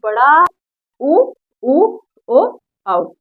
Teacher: जीभ के पिछले वाले भाग से बोला जाएगा बड़ा उ ओ औ, ठीक है।